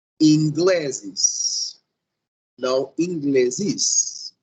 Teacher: porque a força, ou seja, a sílaba tônica, não vai ser a última, senão a penúltima.